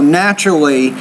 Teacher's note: Remember that TU sound in the middle is a CH, so naturally.